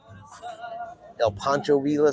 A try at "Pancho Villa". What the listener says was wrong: The L's are silent.